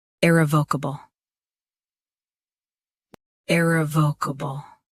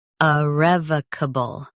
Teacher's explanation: US starts with E. UK starts with uh.